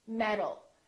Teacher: the T changes into a D when it's between two vowels